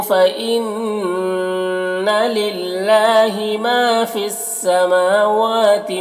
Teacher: माँ और वाव दोनों में खड़ा ज़बर है, दोनों को एक अलिफ के बराबर खींचेंगे।